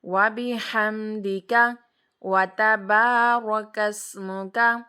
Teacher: اب دیکھیں میں نے با کو لمبا کیا، کیوں کیا؟ کیونکہ اس کے ساتھ الف تھا